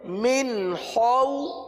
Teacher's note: خا حلق سے ادا ہوتا ہے، حلق کے اوپر والے حصے سے ادا ہوتا ہے۔ خا کو پورا ادا کریں گے کیونکہ یہ حروف مستعلیہ میں سے ہے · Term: حرف خا